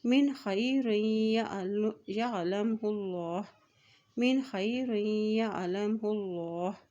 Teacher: अल्लाह के नाम से पहले पेश आ गया तो अल्लाह का नाम यहाँ पर मोटा अदा किया जाएगा